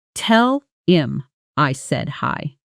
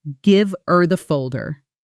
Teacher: The h almost vanishing because him isn't stressed in that sentence. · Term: disappearing each sound